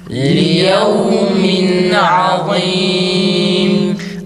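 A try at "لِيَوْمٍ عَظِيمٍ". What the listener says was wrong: Lamın sesi çıkıyor arkadaşlar. Liyevmin değil, bazı arkadaşların sesi l şeklinde çıkıyor. Esre ö şeklinde çıkmaması gerekir.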